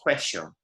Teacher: if you go to Argentina, that will be much more of a sh noise